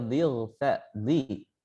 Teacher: ketika kita mengucapkan huruf dad berharokat kasrah, dhi lidah itu masih terasa naik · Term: huruf itbaq